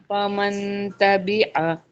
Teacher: نون ساکن کے بعد حروف اخفا میں سے تا آ رہا ہے تو یہاں پہ اخفا کریں گے، نون ساکن کی آواز کو چھپا کے پڑھیں گے، غنہ کریں گے